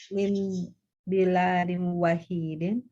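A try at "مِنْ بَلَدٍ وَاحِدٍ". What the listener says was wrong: Min baladin, kalau pendek seperti ini, balad. Balad, mufrad, tunggal kan ya? Kalau lamnya panjang, biladun itu jamaknya, bilad. Akulluhum min baladin wahidin. Kalau lamnya panjang, bilad bacanya. Kalau lamnya panjang, biladun, bi, ba-nya kasroh. Kalau pendek semuanya, itu balad, ba-nya fathah.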